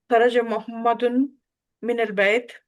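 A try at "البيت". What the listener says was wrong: بیت، بیت نہیں بیت. اس کو مجہول طریقے سے نہیں پڑھیں گے بلکہ جو اعراب ہے نا اسی طرح سے پڑھیں گے. من البیت.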